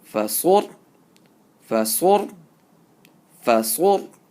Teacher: Sad, ra, bish, sur. So sad is a full mouth. And a ra sakin with the pesh before it will be read with a full mouth.